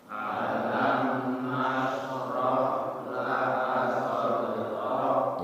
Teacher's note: shin sukun, ha sukun, rohwah mengalir ketika sukun ya. Kemudian rok kaf sukun hamas nggih.